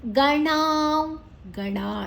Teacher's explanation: ಣ ಮೂರ್ಧನ್ಯ ನಾಲಿಗೆಯನ್ನ ಮಡಚಿ ಹೇಳಬೇಕು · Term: ಮೂರ್ಧನ್ಯ ಣ